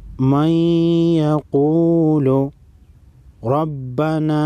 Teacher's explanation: را پر زبر ہے، موٹا پڑھیں گے، چھوٹی مد ہے، 3 الف کے مقدار کھینچیں گے